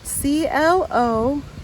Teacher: It's just clothes, like an S sound instead of a TH sound.